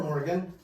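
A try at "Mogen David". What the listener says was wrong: Not even an R in there. Mogan.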